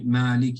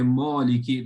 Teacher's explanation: the tongue lies flat therefore there's no heaviness